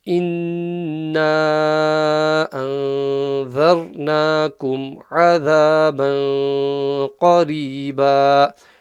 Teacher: we got nun mushaddada gunna, we got ikhfa, we got a raw full mouth, we got ayn from the middle of the throat, we got qaf full mouth, we got raw empty mouth.